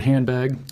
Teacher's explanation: immediately before it. Say the word handbag out loud slowly and notice how the D sound softens and blends into the B that follows it, rather than staying crisp and separate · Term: coarticulation